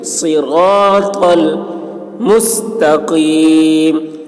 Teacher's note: صاد کی آواز سخت ہوگی، را پر ہوگی، طا کی آواز بھی موٹی ہوگی